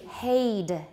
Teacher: that's the way they say head in singapore by the way